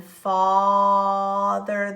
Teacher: it's a kind of a throaty broad sound